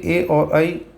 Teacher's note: ए और ऐ तो कंठ तालव्य ध्वनियाँ हैं। देखिए ए जो है ये बना है आ और ई के योग से।